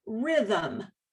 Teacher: you've got that uh sound that schwa in between the h and the m